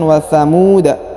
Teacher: Huruf mu dipanjangkan 2 harokat karena di depannya terdapat waw sukun